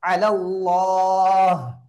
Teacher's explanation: அல்லாஹுடைய லாமுக்கு முன்னால ஃபத்ஹா வரனால அல்லாஹுடைய லாம வல்லினமாக ஓத வேண்டும்